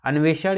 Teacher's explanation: मूर्धन्य श, जिसका उच्चारण जो है मूर्धा से होता है।